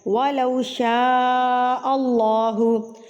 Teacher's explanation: وَلَوْ شَاءَ اللَّهُ، اللہ سے پہلے اگر زبر آ جائے تو اللہ کے اوپر یعنی کہ موٹا پڑا جاتا ہے، اور اس کے اوپر مد متصل بڑی مد، اور اس کی پہچان ہمیں اس حمزہ سے ہوتی ہے، تو اس مد کو آپ نے 4 حرکات کے برابر کھینچ کے پڑھنا ہوتا ہے۔ اگر اس مد کے بعد آپ کو یہ حمزہ نظر آ جائے تو اٹ مینز آپ نے اس کو 4 کے برابر لمبا کرنا ہے۔